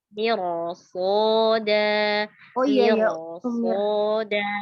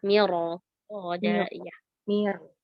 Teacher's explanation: Roknya sukun, sebelumnya berharakat kasroh. Kemudian setelahnya ada huruf yang istilah berharakat bukan berharakat kasroh ya. Maka roknya di sini dibaca tebal.